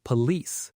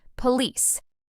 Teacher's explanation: >> A lot of learners put the stress on the first part, police, but native speakers stress the second part